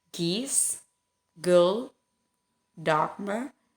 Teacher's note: when we pronounce g, it's articulated like k, but the breath force is weaker · Kemudian pada saat kita mengucapkan G itu vocal cordnya itu dia bergetar.